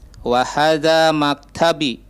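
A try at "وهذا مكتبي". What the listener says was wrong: Nah, maktabi agak panjang B-nya.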